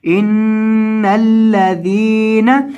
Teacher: تو اس کو گنہ کر کے پڑھیں گے اور دوسرا یہاں ذال کو لمبا کریں گے کیونکہ اس کے بعد یا مدہ ہے